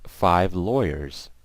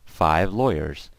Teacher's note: you see at the end how I you know it's like a Z it's not an S